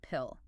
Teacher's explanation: Notice that little puff of air that comes out with the P. P. That's called aspiration.